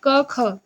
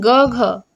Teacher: क ख तो उतना कंपन नहीं हो रहा है लेकिन ग घ तो बोलेंगे तो आप लोग को देखिएगा एक कहीं ना कहीं एक कंपन होता है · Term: अघोष